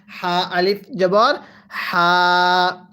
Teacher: এই হাটা উচ্চারণের সময় গলার মাঝখান থেকে বাতাস বের করে পড়বো